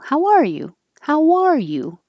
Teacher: If you're the person asking first, then you want the emphasis on the are